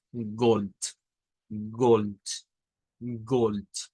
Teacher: En el Deutsch, esta palabra la vamos a hacer sonar con una T al final. Y vamos a decir Gold, Gold, Gold.